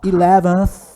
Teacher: Esse aí é o som do TH, é o TH que não é pronunciado, é o unvoiced.